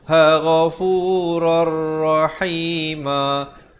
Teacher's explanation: asalnya ghafuran, tapi bila datang ra jadi masuk tanpa dengung. Idgham bila gunnah nama hukumnya.